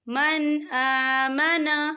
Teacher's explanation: تو ہم یہاں اظہار کریں گے اور ہم اسے بنا غننے کے پڑھیں گے